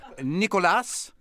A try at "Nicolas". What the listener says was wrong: Forget the S at Nicolas. Nicolas. Yeah, in French it's complicated. Sometimes we pronounce the what you see, and sometimes not.